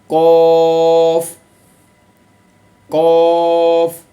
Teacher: ज़ुबान की जड़ जब कौवे के करीब से नरम तालु से लगे तो इससे कौफ अदा होता है।